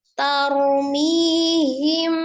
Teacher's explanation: Ada mim sukun bertemu dengan huruf ba, dihukumi ikhfa safawiyah. Jadi diikhfakan disertai dengan dengung yang sempurna, disamarkan disertai dengan gunnah yang sempurna.